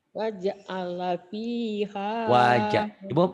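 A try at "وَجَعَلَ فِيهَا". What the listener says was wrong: Waj'ala. Kalau waj'ala itu berarti jimnya mati. Ini waj'ala biasa aja.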